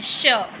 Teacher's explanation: तालव्य श का जो उच्चारण स्थान होता है वो क्या होता है, तालु। ठीक है, जैसे ये वाला जो श है वो कहाँ से बोलेंगे, तालु से बोलेंगे।